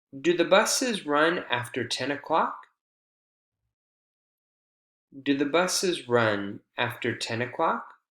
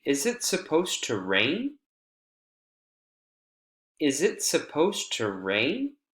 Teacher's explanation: yes or no questions in North American English have Rising intonation at the very end